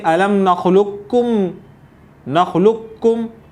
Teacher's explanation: اس کو پڑھنے کے بھی دو طریقے ہیں کہ آپ قاف کی آواز کو بالکل ختم کر دیں اور قاف کو کاف میں ادغام کر دیں اور صرف کاف ہی پڑھیں مشدد یعنی تشدید کے ساتھ، جیسے الم نخلقکم نخلقکم، قاف کی بالکل ادائیگی نہیں. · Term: ادغام تام